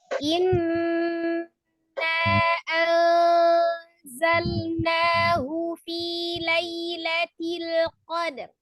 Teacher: Wajib gunnah ditekan, ditahan 2-3 harokat, suaranya masukkan ke rongga hidung.